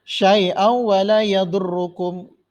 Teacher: Syai'au tanwin bertemu dengan waw idgham ya. Hukumnya idgham, memasukkan huruf yang kedua.